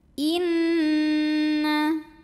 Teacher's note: Cara bacanya dengung. Bunyi n-nya tahan sampai ada getaran halus ke hidung kurang lebih 2 harokat. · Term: gunnah musyaddadah